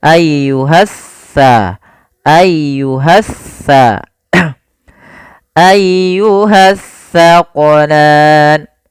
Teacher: Alif lam yang dia tertulis tapi tidak dibaca lamnya. sehingga langsung diidghamkan ke huruf setelahnya. Jadi seakan-akan huruf sin ya, maaf huruf sa ini double, sa-nya dua. · kalau sa ujung lidah kita wajib menempel dengan gigi seri depan, sedangkan sin dia di tengah-tengah lidah. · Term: alif lam syamsiyah